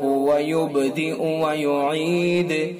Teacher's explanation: با کے اندر قلقلہ ہوگا چونکہ ساکن ہے · تنوین کے بعد حروف حلقی میں سے حمزہ ہے انہو میں، انہو نون حرف مشدد لہذا حرف غنہ ہوگا